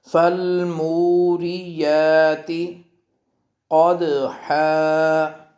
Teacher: والعادیات آ اور یا دونوں کو برابر، والعادیات ضبحا فالموریات مو اور یا دونوں کی لمبائی برابر